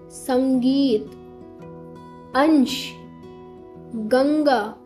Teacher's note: अनुस्वार में बच्चों आपको उच्चारण करते समय ना नाक से निकली हल्की न जैसी ध्वनि महसूस होगी।